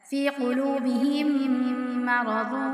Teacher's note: میم ساکن کے بعد میم آ رہا ہے تو ادغام شفوی کی صورت میں ہم یہاں پہ غنہ کریں گے